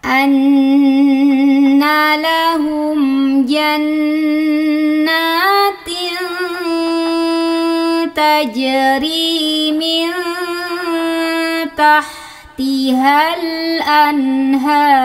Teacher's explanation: Ronya tebalkan, pangkal lidah naik.